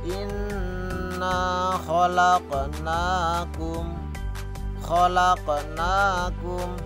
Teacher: khalaqnakum, nunnya panjang 2 harokat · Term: mad